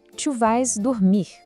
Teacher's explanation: o S do vas não aparece e o som fica bem aberto, como um vá.